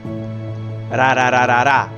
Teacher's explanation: It is a light tap on the alveolar ridge, not to bars of air. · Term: American flap T